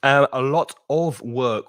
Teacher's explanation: the of almost disappears. You don't really hear it because it's weak.